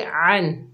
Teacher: आइन के ऊपर ज़बर है, आगे नून साकिन है, आइन को नून से मिलाएंगे, आइन को हलक के दरमियान से अदा करेंगे। नून साकिन के बाद हुरूफ़े हल्की के 6 हरूफों में से हमज़ा आ रहा है तो यहाँ पर नून का इजहार होगा यानी इजहार हल्की का कायदा होगा।